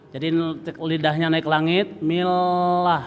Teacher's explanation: lamnya ditekan jadi lidahnya naik langit millah satu huruf saja millah millah lanya dipanjangkan dua ketukan millah